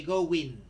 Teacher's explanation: So, we introduce an imaginary w sound · when the previous vowel in the first word is O, we insert a W, right? An imaginary W sound to make it easier to pronounce.